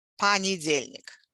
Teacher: And we pronounce it понедельник because remember I told you the rule that if the stress falls on a certain syllable closer to the end of the word, the previous syllables, the previous vowels in the previous syllables get reduced to something like a